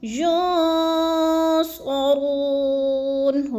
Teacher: نون ساکن کے بعد صاد آ گیا حروف اخفا میں سے تو ادھر آواز کو ناک میں چھپا کر پڑھنا ہے، یعنی اخفا کرنا ہے، ینصرون، رو کو تھوڑا سا لمبا کر دینا ہے، وہ مدہ ہے، وَلَا هُمْ يُنصَرُونَ۔